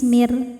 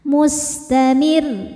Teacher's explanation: Ro ketika berhenti dibaca secara tarqiq karena ro-nya disukunkan dan sebelumnya ada huruf berharokat kasrah, maka ro-nya tipis